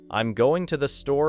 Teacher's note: The word to may become very weak. The sentence flows towards store because that is the important destination.